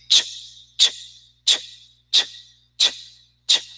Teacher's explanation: But in English, is ch, ch, ch, ch, ch, ch. No vibration. Ch, ch. Plosive, only air. Ch, ch, ch.